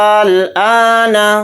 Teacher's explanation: اس کو 5 الف کی مقدار کھینچ کر ہم اس طرح سے پڑھیں گے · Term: مد لازم